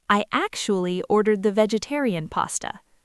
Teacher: Let's talk about the rhythm of this phrase because the word actually has a very specific stress pattern. It has three syllables actu. But all the power, all the stress goes on that very first syllable.